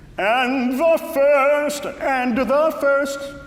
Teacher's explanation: and is one of those words like wood good could when you don't always have to pronounce the final d